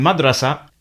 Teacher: al but in derija it's reduced to in madrasa notice that the vowel pattern and stress are different with the darija word losing its first vowel or it becomes a very short schwa sound